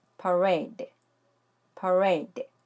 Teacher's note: 뒤에 E가 오기 때문에 A, E 패턴으로 장모음 A의 소리가 나요. 그리고 맨 앞에 있는 모음 A는 강세가 없기 때문에 소리가 약해져요. 그래서 두 번째 모음 A의 강세를 줘서 parade 하고 발음하면 되는 거죠. · 이음절 단어고요. 두 번째 A에 강세가 있어요. 뒤에 E가 오기 때문에 A, E 패턴으로 장모음 A의 소리가 나요.